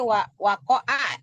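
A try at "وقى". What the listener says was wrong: Alif bengkok, bukan wakoa. Jangan dibaca wakoa, karena memang bukan wakoa.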